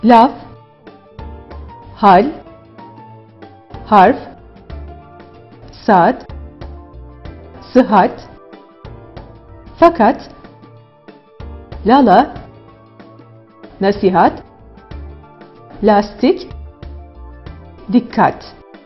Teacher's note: İnce A'ya baktığımızda kalın A'ya oranla daha ileriden çıkarılan bir sestir.